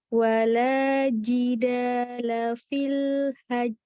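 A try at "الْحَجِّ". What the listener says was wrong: Bukan tapi kalau itu itu lepas namanya, bukan qalqalah. Fil hajj. Nah, jadi jangan lepas tapi memang mantul.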